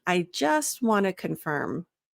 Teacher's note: And even just, I find that I drop the T. I just want to, instead of I just want to, try saying it without any T's. · The more natural pronunciation or fluidity there, oftentimes we'll use the informal contraction wanna. Even in a professional setting, there are certain informal contractions that don't sound as professional, but wanna, it just comes out that way.